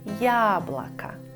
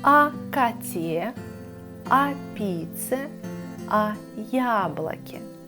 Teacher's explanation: буква «я» в начале слова обозначает 2 звука «й», «а». «Й» – это у нас согласный звук, поэтому правило работает.